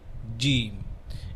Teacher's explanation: জিম বলার সময় মোটামুটি উপরে তালুতে জিব্বাটা ভালোই লাগে